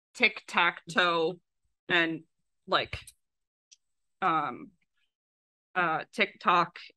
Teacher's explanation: there's actually a very strong pattern of high vowel before low vowel and front before back